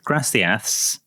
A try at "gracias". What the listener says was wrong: Oh, so you did the lisp at the end. It's gracias. Yeah, you did gracias. It's gracias. It's gracias. Gracias. Gracias. So it's a bit like how we say thought and fountain and think. Fountain.